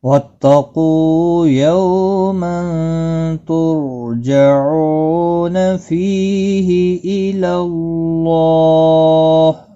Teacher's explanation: اللہ کے لام کے اوپر کھڑی زبر بھی ہے، ایک الف کی مقدار کے برابر کھینچ کر پڑھنا ہے